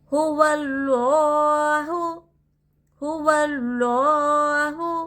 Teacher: یہاں پر دیکھیے اللہ کے لام سے پہلے حرکت زبر ہے، زبر رہا تو اللہ کے لام کو موٹا پڑھنا چاہیے